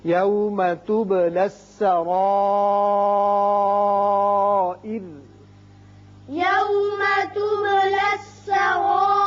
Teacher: جب وقف کر رہے ہیں تو چونکہ را ساکن ہو جائے گا پیچھے زیر ہے اس صورت میں یہ را باریک ہوگا